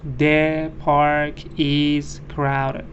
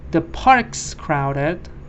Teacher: There's 1 syllable here. Parks get mixed into 1 syllable.